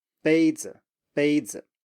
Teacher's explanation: So 杯 is high and flat, and then you have 子, which is very short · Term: first tone plus neutral tone